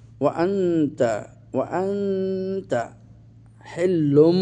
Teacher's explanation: নুন সাকিনকে মিম এর সাথে সন্ধি করে পড়তে হবে। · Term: ইকলাব